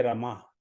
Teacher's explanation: तो रमा में र में कम समय लगेगा, माँ में ज्यादा समय लगेगा, राइट। र छोटा है, ह्रस्व है, लघु है, माँ दीर्घ है, इसे रमा।